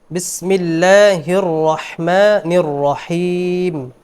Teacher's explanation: بسم الله الرحمن الرحيم বিসমিল্লাহর মধ্যে যে ভুলটি হয়েছে, বিসমিল্লাহির রহমানির রহিম পড়েছেন উনি বিসমিল্লাহির র, হির র মুশাদ্দাদ, এখানে দুই রর উচ্চারণ করতে হবে।